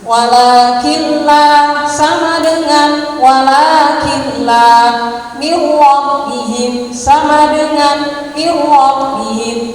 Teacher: Nun sukun atau tanwin bertemu lam ro, rumusnya lama langsung masuk tanpa didengungkan.